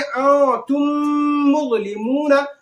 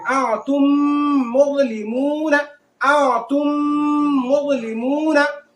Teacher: ये मीम साकिन के बाद दूसरी मीम है, तो यहां जो है इदगाम भी हो रहा है और गुन्ना, नाक में भी आवाज जाएगी, है ना। इसको पढ़ेंगे आ तुम मुज़लिमूना, माना दोनों होंठ को, दोनों शफतैन, शफवी, है ना, दोनों होंठ को थोड़ी देर तक सटाए जो है चिपकाए रखेंगे। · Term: इदगाम शफवी